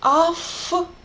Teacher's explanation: T is unvoiced sound, and it affects somehow v, and v also becomes unvoiced, автобус. Instead of v, we are saying f here.